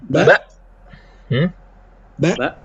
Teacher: jadi Hamzah sukun keluar karena menutup antara pita suara kiri dan kanan